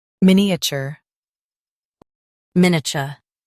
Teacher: Stress min and keep a chur light.